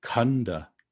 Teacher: with the H, there's a sort of a puff of air that's released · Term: aspirate